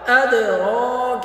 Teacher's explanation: قلقلہ ہوا تھا یہاں پہ بھی قلقلہ ہو رہا ہے ادراک را کو پر کر کے پڑھیں گے کاف کو باریک پڑھیں گے